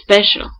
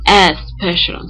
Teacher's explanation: In this case, we know that in our syllable structure, the cluster SP is not possible. And then what we do is to insert a vowel in order to divide that word in order to separate those two sounds, the S and the P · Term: prothesis